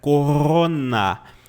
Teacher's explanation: na Alemanha a galera vai usar o r no fundo da garganta